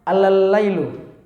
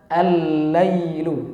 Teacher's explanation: ya tapi kita baca dengan alif lam syamsiah dengan meleburkan ya lam yang pertama kita hilangkan maka kita masukkan ke lam yang kedua maka dibaca allail kemudian pelajaran yang kedua adalah huruf mad yang